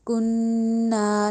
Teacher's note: کننا میں بھی الف مد آ رہی ہے، کننا نہیں کہنا، کننا ناک میں بھی آواز لے کے جانی ہے کیونکہ نون میں شد آ رہی ہے